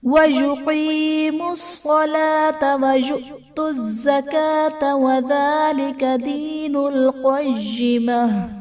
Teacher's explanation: यु'तुज़्ज़कात में हमज़ा साकिना है, झटकर देकर पढ़ेंगे। ज़कात में काफ पर खड़ा ज़बर है जो कि अलिफ मद्दा के कायम मुकाम है, इसलिए हम इसे एक अलिफ यानी दो हरकत के बराबर खींच कर पढ़ेंगे।